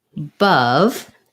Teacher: we have a clear uh in the stressed schwa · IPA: /ʌ/